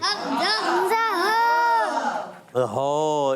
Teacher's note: حمزہ اور ہا ادا ہوتا ہے حلق کے نیچے والے حصے سے